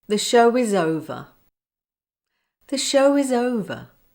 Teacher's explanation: when W is at the end of a word and the following word begins with a vowel sound, it goes back to being a consonant sound that links to the following vowel